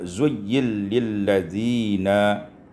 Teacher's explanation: diidamkan Nun pada lam